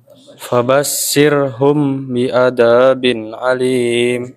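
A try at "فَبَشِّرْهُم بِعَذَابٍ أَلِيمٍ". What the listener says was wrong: Sya-nya kayak kurang kedengeran. Coba sya.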